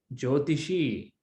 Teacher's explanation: first e is short second e is long